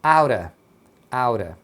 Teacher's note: Aura é o out of quando é falado rápido. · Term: emendando